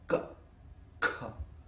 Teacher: in the case of ka and kha, the vocal cord is tight. You hold it tight. So that's why there is no resonance in the vocal cord.